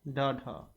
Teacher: जीवा तालु के किसी भाग को झटके से छूकर हट जाती है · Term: उत्क्षिप्त